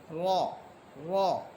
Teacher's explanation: জিহ্বার আগার পিঠ তার বরাবর উপরে তালুর সঙ্গে লেগে র হরফ জিহ্বার আগার পিঠ তার বরাবর উপরে তালুর সঙ্গে লেগে র হরফ